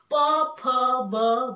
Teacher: दोन ओठांचा एकमेकांना स्पर्श होऊन ज्या वर्णांचा उच्चार होतो त्या वर्णांना म्हणतात ओष्ठ्यवर्ण.